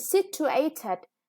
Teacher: And situated, yeah, the third syllable is stressed. · Volcano, the stress is on the second syllable. Lover, the first syllable is stressed.